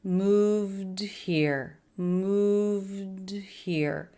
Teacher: he does do a Light release of the D before H